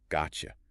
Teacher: Those two sounds blend into a ch sound.